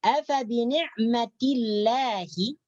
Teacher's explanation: Di sini lafdzul jalalah dibaca nipis tarqiq.